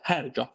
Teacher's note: Hərgah sözündə vurğunun sona qoyublar. Hərgah yox, hər gah vurğu birinci hecadadır.